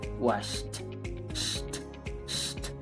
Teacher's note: Pasamos del sonido sh de una vez al t.